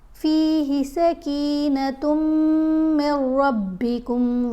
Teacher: جب میم کو را سے ملانا ہے تو غنہ نہیں کرنا، کیونکہ را اور لام کے اوپر غنہ نہیں ہوتا · دونوں میم کے اوپر ہم نے غنہ کرنا ہے. تا کو میم سے ملاتے ہوئے بھی غنہ ہے، میم کو میم سے ملاتے ہوئے بھی غنہ کرنا ہے.